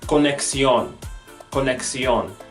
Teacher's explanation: The first sound that the X can make would be as if we combine the KS together.